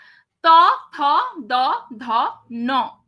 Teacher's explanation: এই ন টা দেখলে পুরোপুরি একদম দাঁতের সামনেটাকে স্পর্শ করছে জীবটা ঠিক আছে এইগুলোকে বলা হচ্ছে দন্ত ব্যঞ্জন ধ্বনি দন্ত ব্যঞ্জন ধ্বনি